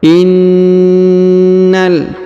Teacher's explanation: huruf na ditahan dan ditekan. Kemudian kita langsung sambung ke huruf lam yang berharokat sukun ya.